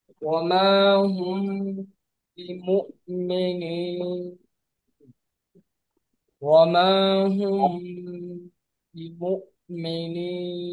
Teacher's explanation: যখন মিম সাকিনের পর বা অক্ষরটি আসে তখন মিম সাকিনকে লুকিয়ে গুণনা সহ করতে হয়। এখানে মিম সম্পূর্ণরূপে উচ্চারিত হয় না, এবং বরং ঠোঁট পুরোপুরি বন্ধ না করে হালকা ফাঁক রেখে গুণনা বের করতে হয়। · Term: ইখফা